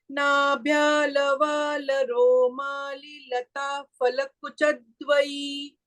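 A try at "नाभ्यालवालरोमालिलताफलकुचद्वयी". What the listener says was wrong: This is Lata Phala. Pha. We should not sound like Fa.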